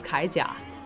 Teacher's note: If you have two of the third tones together, the first third tone becomes a second tone